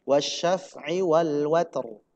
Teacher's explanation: Huruf ta-nya hamas, huruf ro-nya tebal.